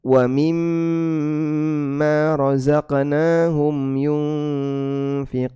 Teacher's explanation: mad arid lisukun yunfiquun dibaca panjang